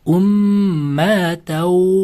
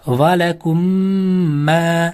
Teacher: Sukunlik mim harfidan so'ng yana bitta mim harfi kelib qolsa, ikkita mimni birlashtirib g'unna bilan o'qiymiz. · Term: Idg'om shafaviya